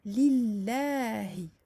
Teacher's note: Nous avions vu également qu'il faut prolonger de 2 temps ce lem, alors que ce n'est pas dessiné.